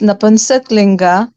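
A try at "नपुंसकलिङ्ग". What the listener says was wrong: Napumsakalinga. You're saying napumsak, it is napumsaka.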